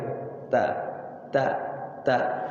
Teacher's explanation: Kalau ta makhrajnya di lidah di belakang gigi seri yang dua, yang di depan, yang atas di belakangnya. Ta. Sifatnya ada anginnya, hams.